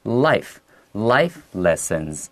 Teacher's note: 我 们 会 把 重 音 放 在 第 一 个 音 节